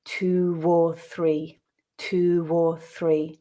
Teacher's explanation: For example, if we think about the phrase two or three, if we listen carefully, we notice that that W letter from two is pronounced when linking with or · the intrusion happens where a word ends in a rounded lips vowel sound. So we're talking about o, oo, or the diphthongs o and ow. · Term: intrusive /w/